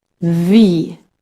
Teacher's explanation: Notice that the W is always pronounced like a V.